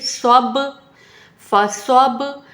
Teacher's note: تو با پر قلقلہ کرنا ہے، یعنی آواز پلٹ کے آتی ہوئی محسوس ہونی چاہیے۔